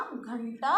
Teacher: उच्चारण में हवा गले में रुकी और नाक से बाहर निकली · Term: अनुस्वार